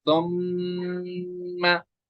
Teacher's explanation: यहाँ पे मीम पे तशदीद है ना, हम पढ़ेंगे सुम्मा, एक अलिफ तक यहाँ पे गुन्ना करेंगे, नाक में आवाज रखेंगे